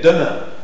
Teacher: La consonne D de demain. C'est une consonne orale, occlusive, dentale et sonore.